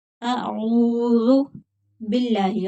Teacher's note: اللہ کا لام باریک پڑھا جائے گا کیونکہ پچھلے حرف کے نیچے زیر ہے